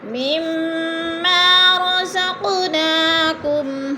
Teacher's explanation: قاف پر قلقلہ ہے، ساکن ہے اور حروف قلقلہ میں سے تو ہلا کر پڑھیں گے۔